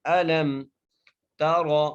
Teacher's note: را کو موٹا کر کے پڑھنا ہے